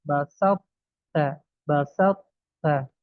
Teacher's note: Kita ulang lagi, cara mengidghamkannya adalah dengan mengeluarkan huruf to dari makhrajnya tanpa dikolkolahkan, kemudian menurunkan pangkal lidah untuk menyebut huruf ta yang dikeluarkan dengan sifat hamas. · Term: idgham naqis